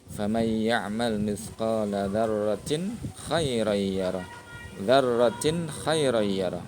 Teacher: Ya, tanwin atau kasratain bertemu dengan kha, dibacanya jelas.